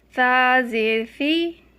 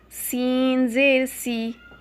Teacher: ثا کو نرمی سے ادا کرنا ہے، سین کو سیٹی کی سی آواز آئے۔